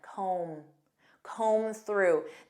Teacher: And notice that B is silent.